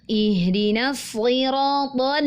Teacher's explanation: huruf lam nya istifal dia tipis maka pastikan kita membacanya dengan tipis